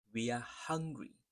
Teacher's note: The rhythm and the stress is in the hung.